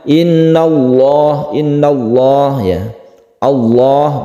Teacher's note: Kemudian lafadz Allah ini disebut lafdul jalalah, membacanya tafkhim atau tebal.